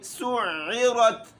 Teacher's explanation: عین کا جو مخرج ہے گلے کے درمیان وہاں سے پڑھا جائے گا